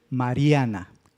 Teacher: ¿Cuál es la sílaba tónica? La penúltima, ria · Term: acento prosódico